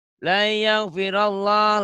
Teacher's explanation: Lafaz Allah dibaca tebal karena sebelum lafaz Allah baris atas.